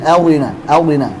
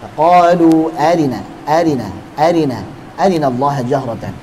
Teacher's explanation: Ra kasrah dengan ikhtilasnya itu dibaca tipis. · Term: kasrah ikhtilas